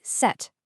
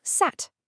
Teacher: You can actually feel your tongue dropping down a little bit with each word. High, mid, and low. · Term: tongue height